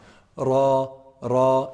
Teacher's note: rah is actually pronounced from the top part of the tip of the tongue the top part of the tip of the tongue when it hits the gums the gums behind the upper incisors the upper front incisors there's